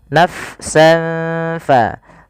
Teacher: Karena huruf fa itu makhrajnya bukan di bibir. Huruf fa itu makhrajnya di bibir tapi tidak rapat bibir kita.